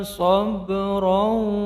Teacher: Alaina sabran qalqalah sughra memantul kecil.